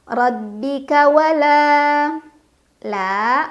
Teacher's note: Mad thobii karena ada Alif sebelumnya fathah dibaca panjang dua harakat